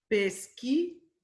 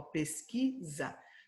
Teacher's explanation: Porque em pesquisa, o S tem o som de Z.